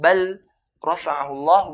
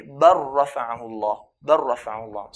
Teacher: Lam sakina, it meets a ra. What we're going to do is merge the lam onto the ra. So instead of saying بَلْ رفعه الله, we say بر رفعه الله. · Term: idgham